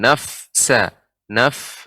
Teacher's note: sifat Fa adalah ketika sukun adanya hams